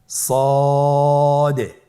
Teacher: জিহ্বার আগা সামনের নিচের দুই দাঁতের পেট ও আগার সঙ্গে লাগিয়ে উচ্চারিত হয়।